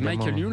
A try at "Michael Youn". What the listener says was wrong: Tu le prononces à l'américaine, toi.